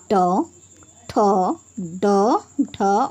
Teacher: ट वर्ग को मूधा यानी कि जीभ की नोक की सहायता से बोला जाता है